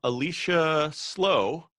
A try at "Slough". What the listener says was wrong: It's always mispronounced slow. It's actually pronounced Slough.